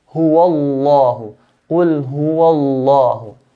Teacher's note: So we pronounce, because of the fatha, we pronounce lam, the word Allah, in a heavy manner.